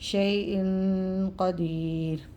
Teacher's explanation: اخفا میں ناک میں آواز چھپائیں گے 1 الف کی مقدار تک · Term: اخفا کا غنہ